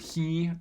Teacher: if you pronounce uh an h um in the word he the h right before an e sound it's about at the same place of articulation as a palatal